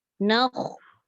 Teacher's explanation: Sebab kha tu dia adalah sifat isti'la. Isti'la ni maksudnya mengangkat pangkal lidah. · Belakang ni angkat dekat langit supaya bunyi dia tebal. Nakh. Sebab kalau kita sebut dia berbaris atas, bunyinya kha ke kha?